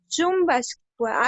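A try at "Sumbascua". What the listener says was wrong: está cerca, pero no es chu, es su. Su.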